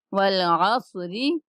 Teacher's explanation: جب والعص کہیں گے تو ہون تھوڑے سے گول ہونے چاہیے جس سے سواد ادا ہو سکے